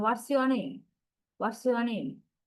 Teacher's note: What's your name? What's your name? That's falling intonation.